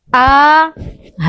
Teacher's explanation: Nah, mereka sama-sama keluar dari pangkal tenggorokan. Nanti yang akan membedakan mereka adalah dari segi sifat-sifatnya.